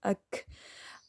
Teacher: کاف ساکن پہ ہمز کریں گے، یہ اک میں تھوڑا زیادہ زور سے کر رہی ہوں تاکہ آپ کو سمجھ آئے، ٹھیک ہے، ایئر فلو ہوتا ہے، دیکھیے اک، ہوا جاری رہتی ہے، ات، اس طرح۔